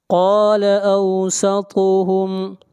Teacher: طا کو موٹا پڑھیں گے، طا حروف مستعلیہ میں سے ہے۔ ہم علم، میم کے اوپر اظہار کریں گے، میم ساکن کے بعد نہ میم ہے اور نہ با ہے۔